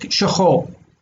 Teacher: Like you don't hear the resh.